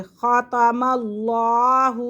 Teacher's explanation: لفظ اللہ کی لام سے پہلے زبر آ رہا ہے تو اس لیے ہم اسے پر کریں گے